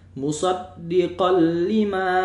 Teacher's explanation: tanwin berjumpa dengan lam. Maka hukum bacaannya ialah idgham bila ghunah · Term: idgham bila gunnah